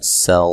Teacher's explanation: سین کو باریک سیٹی سے ادا کرنا ہے اور را کو موٹا ادا کرنا ہے